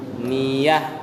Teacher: Ninya hidung, yanya tidak.